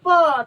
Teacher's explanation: जैसे यहाँ पे बोला गया है प का उच्चारण स्थान, अपने ही मन में बोलो प, तो देखना दोनों ओष्ठ सट जा रहा है, तो इसका मतलब क्या हो गया, इसका उच्चारण स्थान ओष्ठ से।